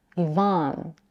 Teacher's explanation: some people pronounce the second vowel in Ivon with unrounded lips. A as in father, Ivon.